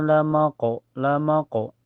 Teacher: kenapa disebut qalqalah sugra karena pantulannya kecil ya asal mantul aja